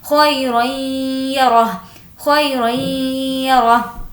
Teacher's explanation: तनवीन के बाद या है इसलिए गुन्ना करेंगे